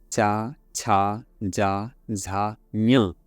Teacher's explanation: ई, चा, छा, जा, झा, ञ तालु से निकल रहे हैं।